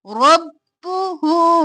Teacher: رب رو موٹا با دو بار بو حرکت ہے جلدی سے رب ہو چار الف کے برابر کھینچا